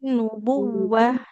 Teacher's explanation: Nunnya tasdid ditahan dulu. Huruf wunnya dialirkan suaranya.